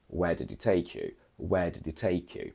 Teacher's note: a very factual emotionless and standard question by going down